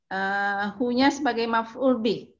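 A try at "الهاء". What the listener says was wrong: Iya, kita jangan bilang hu ya, tapi al-ha'u. Karena kaidahnya itu huruf itu kalau satu dieja bu, jangan dibaca. Jadi jangan bilang hu-nya maf'ul bih, tapi al-ha'u maf'ul bih.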